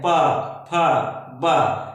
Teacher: जब हम पा को उच्चरित करते हैं तो हमारे होठ जो है आपस में आकर के मिलते हैं, पा फा बा। इस प्रकार से हम देखते हैं कि हमारे होठ जो है एक दूसरे से मिलते हैं, टच करते हैं, तब जाकर के हम इन ध्वनियों का उच्चारण कर पाते हैं, इसलिए इन ध्वनियों को ओष्ठ ध्वनियां कहते हैं।